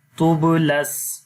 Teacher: با کے اوپر قلقلہ کریں گے اور یہاں پر جو قلقلہ ہوگا وہ کمزور ہوگا